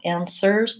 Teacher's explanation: the W is silent and that final s in answers is a Z sound